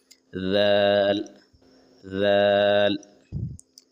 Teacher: زبان کو نکالے اور اوپر والا جو دانت ہے اس کو زبان پہ رکھے، پھر ذال ادا کر لے، آسانی سے ہو جائے گی.